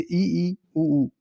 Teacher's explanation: कि बिल्कुल बंद के समान होता है जैसे इ ई उऊ इसमें मुह बहुत कम खुलता है न के बराबर खुलता है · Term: संवृत स्वर